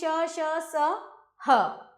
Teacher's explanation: इन वर्णों का उच्चारण करते समय श्वास गति से मुख से रगड़ खाती हुई बाहर निकलती है जिससे गर्मी उत्पन्न होती है। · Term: उष्म व्यंजन